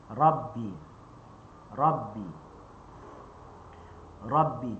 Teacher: huruf ba bibir atas dengan bawah dia bertemu dengan sempurna. Cuma jangan tekan dua kali.